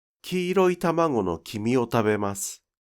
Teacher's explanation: In the sentence “kiiroi tamago no kimi o tabemasu,” the pitch on “ki” at the beginning of the sentence does not drop. · the pitch does not drop on “ta” in “tamago” or on “ta” in “tabemasu.”